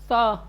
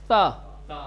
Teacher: زبان کی نوک کو اوپر کے دانتوں سے ملا کر آواز کو باہر نکالیے. جی، اوپر کے جو سامنے کے دانت ہیں اس دانت سے زبان کی نوک کو ملائیں.